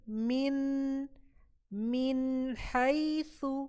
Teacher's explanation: نون کے مخرج پہ پورا ہم جائیں گے اور اس کا پورا ساؤنڈ دیں گے. من حیث، اور پھر ہا پہ جائیں گے ہم. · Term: اظہار